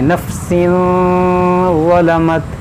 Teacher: وَلَوْ أَنَّ لِكُلِّ نَفْسٍ ظَلَمَتْ، یہاں پر دیکھیں تنوین ہے، تنوین کے بعد ظا حروف اخفا ہے، تو یہاں پر اخفا کریں گے، یعنی ناک میں آواز لے جائیں گے